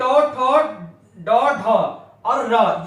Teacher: ये मूर्धन्य से बोले जाते हैं। तालु के अगले हिस्से को मूर्धन्य कहा जाता है।